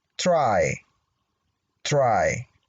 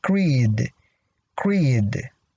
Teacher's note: Okay, the rule says L and R become devoiced when they occur after a voiceless stop. So in this case, we have the R after the sound T, which is a voiceless stop.